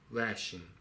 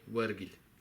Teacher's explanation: the initial b sound became a w, So B, the sound B often becomes a W sound in Mongolian dialects, but never in initial positions, only in Henan Oirat.